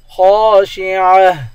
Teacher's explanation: خا کو ایک الف کے مقدار کھینچ کر پڑھیں گے، الف حروف مدہ ہے، خا موٹے حروف میں سے ہے، اس کو موٹا پڑھیں گے.